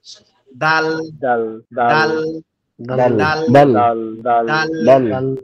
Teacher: হবে দাল অক্ষরটা আমরা যে তা উচ্চারণ করলাম না একটু আগে জিউবার আগা সামনের দুই দাতের গোড়ার সঙ্গে লেগে